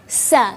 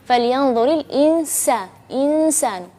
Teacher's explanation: jadi pelafalannya tipis sekali dan ada juga suara berdesir. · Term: sin